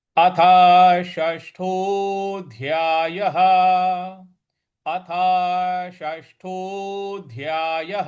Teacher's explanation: ये जो साइन है ये दीर्घ, जैसे ओ की जो मात्रा यहाँ आ रही है उसको दीर्घ थोड़ा सा खींचना होता है।